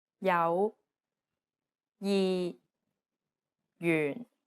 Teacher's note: and one of the most confusing aspects is the J consonant although it's represented as a j it actually sounds like an English Y sound